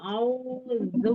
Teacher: setelah ya normal dulu mulutnya baru zu. Jadi jangan dari au ke zu monyongnya terus-terusan. Normalkan dulu.